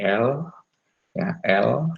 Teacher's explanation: l ketika lidah terangkat ya untuk menuju ke titik artikulasi adalah udara dialirkan di sebelah kiri dan kanan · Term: lateral